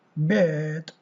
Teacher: This is a mid-central vowel which is used in most English accents as a hesitation sound, written er, but which many learners find difficult to copy.